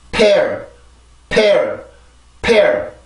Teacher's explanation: 그냥 평범하게 P 발음을 해주는 게 아니라 공기를 강하게 만들어줘야 돼요. 성대까지 올라가기 위한 힘을 더 주려면 강하게 공기를 만들어줘야 된다는 얘기인데, 이렇게 폐쇄음들이 있을 때는 제가 그 공기를 막고 있는 부분에 힘을 더 주라고 말씀을 드렸었죠. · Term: 양순 폐쇄음